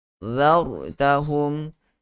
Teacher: Ra mati sebelum dia berbaris di atas juga, ra itu ditebalkan. Zartahum. Tetapi kena hati-hati, meskipun kita nak tebalkan pada huruf ra, hati-hati jangan sehingga huruf zal terbau-bau untuk ditebalkan.